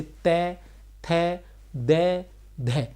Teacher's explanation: जिन व्यंजनों का उच्चारण जीभ के अग्र भाग द्वारा दांतों को स्पर्श करने से होता है।